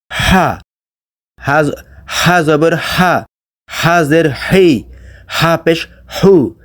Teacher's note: লম্বা হা উচ্চারণ করতে হয় গলার ভেতর থেকে মুখ দিয়ে না